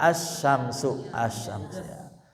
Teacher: Alif lam qamariyah dibaca lamnya jelas ya, terdengar al ya. Kalau samsiyah dileburkan, diidghamkan ke huruf samsiyah. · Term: alif lam samsiyah